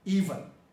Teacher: So in General American English, this word that takes the stress on the first part, even, has one vowel which is E, and then it has a second vowel which is a schwa